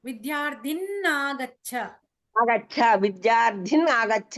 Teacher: పరపదంలో అ పరమైంది కాబట్టి నకారం రెండుసార్లు వస్తుందండి